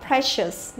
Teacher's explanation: e lại cũng không đọc là i dài mà vẫn đọc là e bình thường